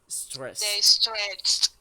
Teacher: Tenemos sin el ed sería stress. El último sonido es s. Entonces, si le agregáramos ed, sería con T, ¿ok? Porque es con T. Exacto, porque es un sonido voiceless.